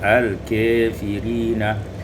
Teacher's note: Pada ayat yang ke-101 al-kafirina imalatu fathatul kaf wal alif, dibaca imalah fathah kaf dengan alif menjadi al-kafirina